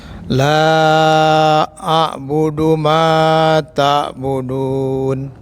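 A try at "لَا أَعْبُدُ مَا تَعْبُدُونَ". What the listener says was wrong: Baik. Panjang dikit ya Pak.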